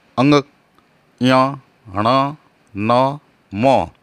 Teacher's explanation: इन सब वर्णों का उच्चारण स्थान है नाक। इसलिए इन्हें नासिक्य व्यंजन भी कहते हैं।